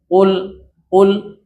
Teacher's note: Yang betul adalah ada tebal tapi ketebalannya tidak berlebihan.